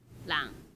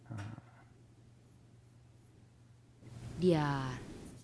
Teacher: Um, it also has uh tone and it has a contrast between what are called creaky and breathy voice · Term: creaky voice